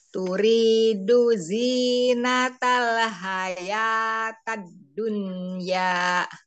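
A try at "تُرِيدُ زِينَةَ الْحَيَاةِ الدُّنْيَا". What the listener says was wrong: Ti, bukan ta, tapi ti ya.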